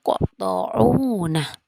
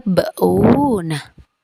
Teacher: Cara membacanya dipantulkan dengan pantulan yang tidak terlalu kuat. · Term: qalqalah suro